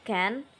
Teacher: in can, the vowel a is partly nasalized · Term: nasalization